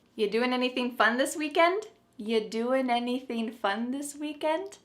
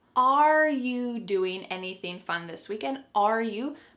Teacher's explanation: But the word are, it's on vacation, it's just gone somewhere.